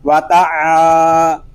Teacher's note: عین حلق کے درمیان والے حصے سے ادا ہوگا، اور عین کو ہم باریک پڑھیں گے، یہ حروف مستفلہ میں سے ہے۔